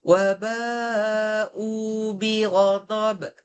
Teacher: U tu dua harakat namanya mad badal.